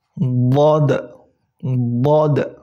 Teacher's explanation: Tapi hanya perbedaannya yaitu huruf dhad ini permukaan lidah kalian itu semuanya menyentuh langit-langit atas